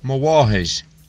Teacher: Notice that the initial consonant is pronounced more like W or V, rather than a bilabial nasal M sound. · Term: lenition